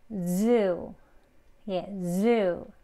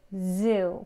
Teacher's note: 그래서 혀끝에 이렇게 z 하는 진동이 꼭 이제 울려야 그 소리를 낼 수가 있어요.